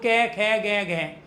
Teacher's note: जैसे मैंने उच्चारण किया क ख ग घ अब यहां हाथ लगा के रखो आप यहां पे हाथ रखो और उच्चारण करो क ख ग घ तो जब आप उच्चारण कर रहे हो क ख ग घ का जब आप अ का उच्चारण कर रहे हो है का और विसर्ग का उच्चारण कर रहे हो तो आप गले का प्रयोग कर रहे हो इसी को कंठ कहा जाता है